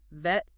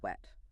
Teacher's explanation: For the W sound, your lips are rounded, like you're blowing out a candle, WWWW. The difference is friction versus rounding.